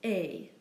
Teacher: the French word for and is pronounced a not at it's simply a